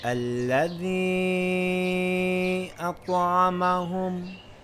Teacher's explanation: we see a long vowel in one word, and directly after it we see a Hamza in the next word. We lengthen it for 2 or 4 counts if preferred.